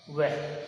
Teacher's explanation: दंतोष्ठ में केवल एक ही जो है व्यंजन आता है, वो आता है वह, और इसका उच्चारण स्थान किससे होता है, दंत और ओष्ठ यानी दांत और होठ दोनों से मिला करके उसका उच्चारण स्थान होता है